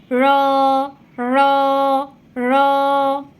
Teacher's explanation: র র র উচ্চারণের সময় আপনার জিহ্বার আগার উল্টা পিঠ উপরে তালুর সঙ্গে লাগিয়ে রটা উচ্চারণ হবে।